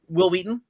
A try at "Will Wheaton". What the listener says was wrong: Why are you putting so much emphasis on the H?